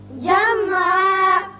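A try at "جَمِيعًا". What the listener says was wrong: نہیں، میم پر قلقلہ نہ ہو، جمعا۔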